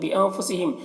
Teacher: نون میں اخفا ہوگا، نون کی آواز کو ناک میں چھپا کر پڑھیں گے. ہم کی میم اظہار حقیقی ہو رہا سے جلد پڑھنا.